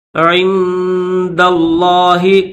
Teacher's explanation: لفظ اللہ کو موٹا کر کے پڑھیں گے